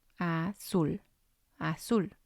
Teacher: And again, it has 2 syllables. And we're going to stress the last one.